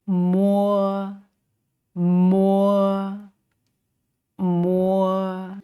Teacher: then let them out through the nosy capacity this time and this sound is not aspirated just as in the English May